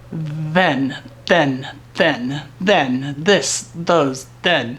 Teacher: your tongue hits right behind the front of the lower part of those upper teeth